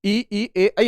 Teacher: ई ए ऐ आप बोलोगे तो जीभ के अगले हिस्से पे ज्यादा जोर आप महसूस करोगे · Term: अग्र स्वर